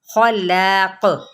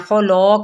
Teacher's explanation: لام پھر الف جو ہے نا یہ باریک پڑھنا ہے